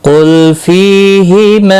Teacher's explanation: فی یا مدہ ہے، ایک الف کے برابر کھینچ کر پڑھیں گے۔ ہما مد منفصل ہے، تین الف کے برابر کھینچ کر پڑھیں گے